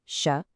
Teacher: the harder tongue-curled sha